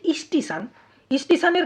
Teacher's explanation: প্রথমে ই স্বর ধ্বনির আগমন ঘটে গেছে পুরো শব্দের একেবারে শুরুতে অর্থাৎ আদিতে তাই স্টেশন থেকে স্টেশন এটা হচ্ছে আদি সরাগম কেমন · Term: আদি স্বরাগম